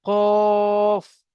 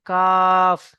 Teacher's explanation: কফকে মুখ গোল করে পড়তে হবে কফ আর কাফকে মুখ লম্বা করে পড়তে হবে কাফ